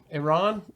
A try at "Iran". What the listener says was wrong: Good to say like Iran. Iran. You roll your R's.